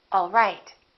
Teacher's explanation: my pitch goes down at the end for a statement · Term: falling intonation